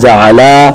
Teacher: جعلا زبر کو ذرا لمبا کر کے پڑھنا، جعلا الف پیدا ہو کر، تو یہ تثنیہ کا صیغہ بن جاتا ہے، تو معنی کہیں سے کہیں تبدیل ہو جاتا ہے۔